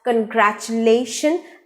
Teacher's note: the u letter in the word is not pronounced as oo sound it is omitted it is silenced so the word is pronounced as congratulation and